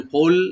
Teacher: কোল মানে কুল যেন না হয়, কোল জিব্বার গোড়া থেকে আসবে।